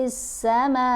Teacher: میم کے اوپر مد متصل ہے، 5 حرکت کے برابر لمبا کرنا ہے